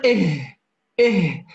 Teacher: أقصى الحلق يا أحباب يخرج منه الهمزة والهاء، يعني ضع يدك هنا وقل إيه، تجد المنطقة تهتز، هذا هو مخرج حرف الهاء.